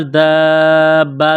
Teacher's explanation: دال الف با مد زبر دابا، زبر با، یہ لمبی مد ہے، 4 الف کے برابر کھینچنا ہے۔